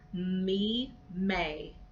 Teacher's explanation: may me is also bilabial sound it's more nasal because that the sound comes through the nose but you're still pressing your lips together to get that sound